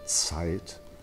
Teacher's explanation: simple things like Zs, they must have a T in front of them, so Zeit. All these things I think choirs need to be reminded of.